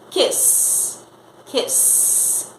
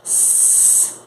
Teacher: O último som do kiss é o som do S, então S. Não vibra de forma alguma, ele é um voiceless sound, um som não vozeado.